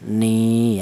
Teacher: Dibaca mad thai. Alasannya ada ya mati yang didali huruf yang berharakat kasrah dipanjangkan dua ketukan. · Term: mad thaobi'i